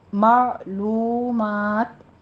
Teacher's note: مع الغنہ کرنا ہے، اور آگے مع بھی نہیں کہنا، معلومات، عین کو وسط حلق میں لے جا کے سٹاپ کرنا ہے